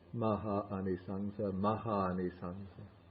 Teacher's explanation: when you have two long A's meeting, then they join and you're left with only one long A.